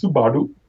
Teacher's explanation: we have this kind of flappy R, like in Japanese Subaru